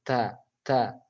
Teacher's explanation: Ta itu kan ujung lidah bertemu tempat tumbuhnya gigi seri atas ya atau antara gigi dan gusi. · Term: huruf ta